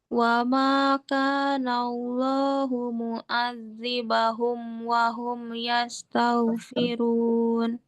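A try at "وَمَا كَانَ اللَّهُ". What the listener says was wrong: Wa makana Allah. Ya, tebalkan lafaz jalalanya.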